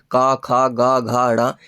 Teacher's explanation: तो क वर्ग आपका कंठ से बोला जाता है